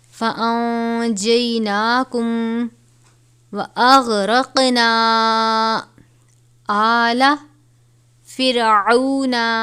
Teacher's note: نون ساکن کے بعد جیم ہے، حرف اخفا میں سے، تو یہاں پر اخفا کریں گے